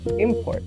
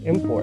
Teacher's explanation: having the stress on the first syllable depicts the word as a noun